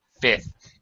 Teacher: you don't need to pronounce the second f in fifth